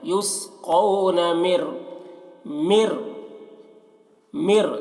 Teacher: میم کو را سے ملا کر پڑھیں گے، نون کو نہیں پڑھا جا رہا ہے. مر رحیق، را کو پر پڑھتے ہیں.